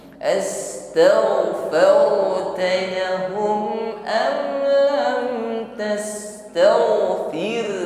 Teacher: Ra sukun yang sebelumnya harakat fathah, maka tafkhim hukumnya ya, getaran ra-nya ditebalkan.